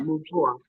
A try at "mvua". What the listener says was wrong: You don't pronounce M as separate. You combine them. So you say mvu, mvu. So it's mvua, mvua. Mvua.